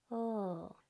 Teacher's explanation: This L is a sustained sound. It's made by your tongue going right behind your top teeth, and it stays there.